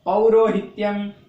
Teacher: તો પૌરો ની ઉપર ભાર મૂકવાનો આવે છે. તો એ ભાર મૂકવાનો અને એનું ઉચ્ચારણ સહેજ લંબાવવાનું, એને જ આપણે ઉદાત્ત એવું નામ આપીએ છીએ.